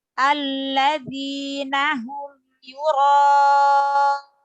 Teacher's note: Alladzi lam tasdidnya ditekan Ibu, ada nabroh. Setiap yang bertasdid itu ada nabroh ya, kecuali mim sukun dan nun sukun.